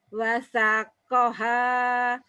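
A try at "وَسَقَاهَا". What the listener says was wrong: Sanya kurang panjang dikit.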